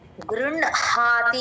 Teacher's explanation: కింద అణ వత్తు ఉంటుందండి అది ఒక సంస్కృత సూత్రం ప్రకారం అలా వచ్చినప్పుడు ముందర న పలికి తర్వాత హ పలకాలి గృన్ హాతి అనాలి